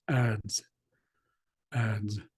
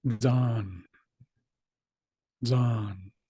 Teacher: the Zed kind of behaves like a a d and a z together